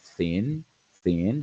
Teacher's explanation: están relajadas no hay vibración entonces sordo